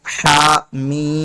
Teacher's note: बाकी आगे देखें, हा मीम, यहाँ पर सिर्फ 1 अलिफ के बराबर हा खींचेंगे, हा को 1 अलिफ के बराबर खींचेंगे, जबकि मीम पे मद है, इसको 3 अलिफ के बराबर खींचकर पढ़ेंगे।